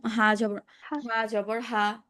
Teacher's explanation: হা ভিতর থেকে আসবে না। মুখটা বড় করে হচ্ছে একেবারে হলকের শুরু থেকে আনেন।